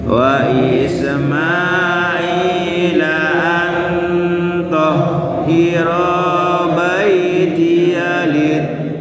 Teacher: To ada tanda panjang alif lalu disebut hamzah, mad wajib muttasil. Jadi kita patok 5 harokat saja.